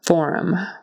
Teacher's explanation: Forum, accent on the first syllable.